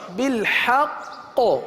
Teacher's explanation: وقف میں قلقلہ مشدد ادا ہوگا کیونکہ تشدید وقف میں باقی رہتی ختم نہیں ہوتی اس لیے یہاں قلقلہ ہوگا